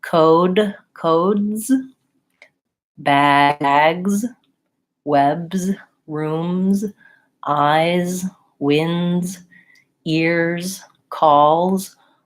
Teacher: you might not be hearing that because your accent filter makes you think of it as being an S sound rather than a Z sound